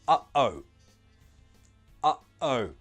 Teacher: Your throat, your airway closes. It stops the sound coming out. That is the feeling. That's the sound of the glottal T.